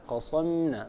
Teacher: والميم هي حرف مستفل مستحقه الترقيق ، يعني لا يصح أن نقول وكم قصمنا قصم ميم أم،